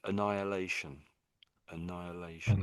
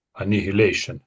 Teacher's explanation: so it's almost as if the H isn't there at all, in a way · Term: the H is silent